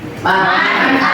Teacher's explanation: Man amana bisa dibaca idhar karena ada nun sukun itu bertemu dengan huruf hamzah · Hukum bacaan idhar halki adalah apabila ada nun mati atau tanwin bertemu dengan salah satu huruf-huruf halki, maka dibaca jelas, yaitu terang, tidak samar, dan tidak mendengung